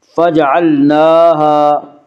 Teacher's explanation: نون کے اوپر کھڑا زبر ہے، کھڑا زبر کو ایک الف کے برابر کھینچ کر پڑھیں گے